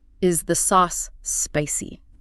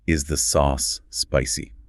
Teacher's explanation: Listen to the rhythm of the question. The emphasis naturally falls on the final word.